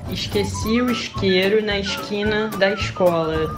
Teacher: o culpado pelo S com som de sh foram os portugueses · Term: chiado do Rio